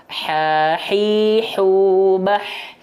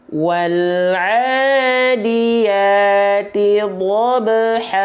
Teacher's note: pastikan H kecil dilafalkan dari bagian tengah tenggorokan kita